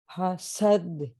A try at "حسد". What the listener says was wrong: ٹھیک ہے, حسد, سین کو موٹا نہیں کرنا.